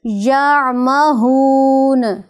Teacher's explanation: اس میں جھٹکا پیدا نہیں کرنا، عین کی آواز جب آپ ادا کریں گے، عین کو ادا کرتے وقت وہاں حمزہ کی صورت میں جھٹکا نہیں پیدا ہونا چاہیے۔